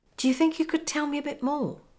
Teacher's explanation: Notice the 2 words, do you? They become j. Also, the whole sentence is on the same level of intonation except for the words think and more.